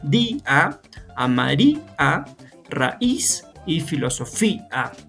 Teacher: la vocal cerrada tiene la mayor fuerza de voz. Por lo tanto, por hiato acentual tienden a separarse